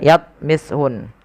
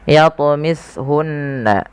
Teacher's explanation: ada bacaan qalqalah wajib kita pantulkan lafal huruf tha. Jangan dibaca yatmishun, tapi harus memantul.